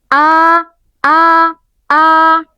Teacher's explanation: jahar atau tidak mengalirnya nafas pada huruf hamzah tersebut. Hal ini bisa kita buktikan ketika membaca huruf hamzah yang berharakat fathah.